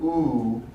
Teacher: the lips are rounded so it's sometimes difficult to remember that the tongue position is actually pulled towards the back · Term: high back tense